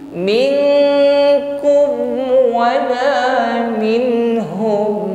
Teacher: bunyi dengungnya ini Paling e lebih mendominasi dari bunyi samarnya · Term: ikhfa Adna